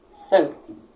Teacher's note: Sancti possui duas sílabas. Sancti. ti. Automaticamente, a primeira é a mais forte, a tônica